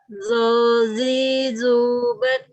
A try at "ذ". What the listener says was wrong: Oke, makrosnya udah benar, tinggal naikin pangkal lidahnya susah. Susah sekali naikin pangkal lidah.